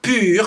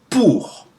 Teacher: OU like in pour, which is not pur, which is pure, which is U with a tight throat, but it's OU with an open throat, pour. Okay, OI is pronounced wa, like in moi, me.